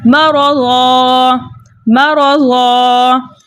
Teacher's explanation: را کے اوپر زبر ہونے کی وجہ سے را کو موٹا پڑھا جائے گا